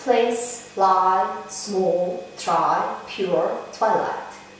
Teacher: are partially devoiced when preceded by voiceless consonants s, p, t, k, f, sh